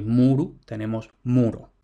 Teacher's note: la U larga se conserva como U